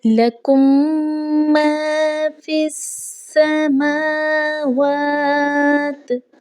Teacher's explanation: لکم اور ما کو الگ الگ نہیں پڑھنا، بلکہ ایک دوسرے میں گنہ کر کے مدغم کر کے پڑھنا ہے · تو ادغام شفوی تب ہوتا ہے جب میم ساکن کے بعد میم آ جاتی ہے، یعنی کہ پہلی میم کو دوسری میم سے ملا کر پڑھا جاتا ہے اور آواز ناک کے بانسے سے ادا ہوتی ہے، یعنی کہ گنہ کے ذریعے سے اس کی ادائیگی کی جاتی ہے۔